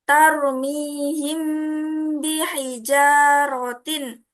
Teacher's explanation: Jadi bacanya itu harus samar-samar di bibir dan didengungkan